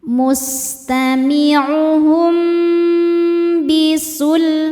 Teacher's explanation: Karena mim sukun menghadapi huruf ba, maka mim sukun dibaca berdengung, ditahan. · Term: ikhfa syafawi